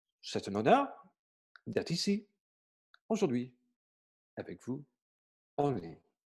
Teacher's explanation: c'est un rythme léger et court, tapotant